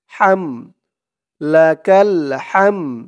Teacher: হা দিয়ে মিম ধরবে, হা মিম জবর হাম, হাম। এই হার আওয়াজটা গলার ভিতর থেকে চিকুন করে আনতে হবে